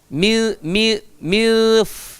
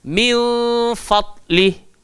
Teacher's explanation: Cara nak sebut fadli, nun mati nak masuk dekat dalam fa. Ingat, gigi arnab duduk dekat atas bibir bawah.